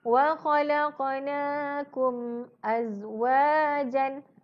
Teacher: kita kena baca dengan terang dan nyata, iaitu dengan jelas tanpa dengung